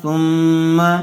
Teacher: سا میم پیش سم میم زبر ما، ثم سم غنہ ہوگا، جب سا کو میم سے ملائیں گے تو غنہ ہوگا